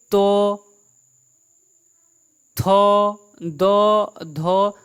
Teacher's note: जीभ सीधे दांत प आके सट रहा होगा इसलिए इसे कहते हैं दंत ध्वनियां